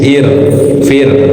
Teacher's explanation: kemudian sebelumnya kasrah itu dibacanya tarkik tipis